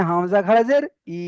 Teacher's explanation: খাড়া জেরটা ইয়া মাদ্দার মতো এক আলিফ টান হবে